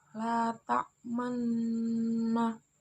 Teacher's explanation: cara membaca bacaan ismam dengan cara memajukan dua bibir